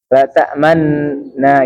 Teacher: Ismam ada isyarat memonyongkan dua bibir.